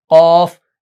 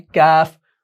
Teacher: अब फर्क इनके अंदर मुफख्खम और मुरक्कक का है, यानी पुर और बारीक का है। कौफ को हम मोटा पढ़ते हैं कौफ, काफ को बारीक पढ़ते हैं काफ